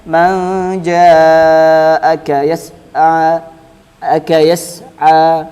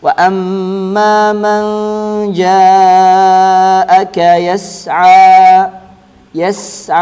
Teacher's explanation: Biasanya bacanya man ja'aka yas'a, biasanya sinnya itu pendek, tapi yang benar disempurnakan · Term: sin sukun